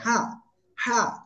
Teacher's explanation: হা জবর হা, গলা চেপে উচ্চারণ করতে হবে, হা হা, কোনো টান হবে না, জোরে বলেন, হা হা জবর হা।